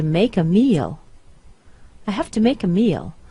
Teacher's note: all of these have toos are reduced to half